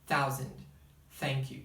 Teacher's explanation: Pode até soar como T. É um T, só que é com a língua entre os dentes.